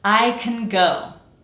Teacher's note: We have the words I and go, the ones that carry the meaning of the sentence, and those are nice and clear, fully pronounced. And then in the middle we have can.